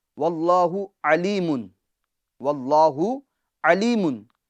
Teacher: عین عین جو درمیان حلق سے ادا ہوتی ہے